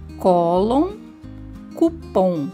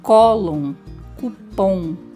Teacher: Cólon tem como sílaba mais forte o có e cupom o pom. Ambas terminam com on, mas o som, a pronúncia é diferente.